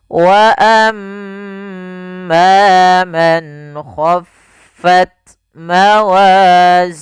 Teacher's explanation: mim tasdid bacaan ghunah yaitu suaranya menahan dulu surah mnya sepanjang dua harakat